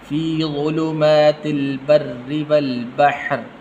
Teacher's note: را کے نیچے زیر ہے تو باریک کر کے پڑھنا